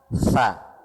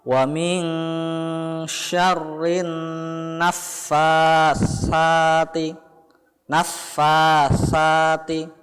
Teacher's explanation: Kemudian yang selanjutnya adalah anak-anak memperhatikan cara membaca huruf sa yang terdapat dalam ayat ketiga dengan merapatkan ujung lidah dengan gigi atas